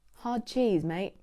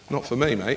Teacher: That T sound coming at the end of the word kind of disappears. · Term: T dropping